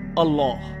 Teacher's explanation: আল্লাহ শব্দটি উচ্চারণের সময় এই নামের প্রতি সম্মান প্রদর্শন করতে আমরা তাফিন করি। অর্থাৎ ভাব গম্ভীর স্বরে উচ্চারণ করি আল্লাহ। যুক্তলামের এই ভাব গম্ভীর উচ্চারণ শুধু আল্লাহ নামের ক্ষেত্রে করা হয়।